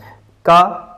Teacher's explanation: यहां पे जीभ कंठ में ऊपर टच हो रही है। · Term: स्पर्श